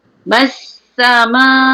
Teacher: Kena sedesirkan sin sebab dia huruf safir.